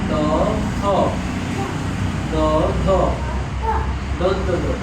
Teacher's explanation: জিভের মাথাটা গিয়ে লাগে দাঁতের ঠিক পেছনে। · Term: দন্ত বর্ণ